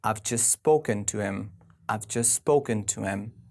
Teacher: we do not say him we say m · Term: squeeze word